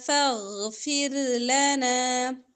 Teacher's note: غین موٹا پڑھیں گے پھر را باریک پڑا جائے گا